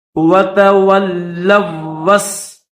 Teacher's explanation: یہ جو لام ہے اس کو اس واو کے ساتھ ملائیں گے اور واو کو سین کے ساتھ ملا دیں گے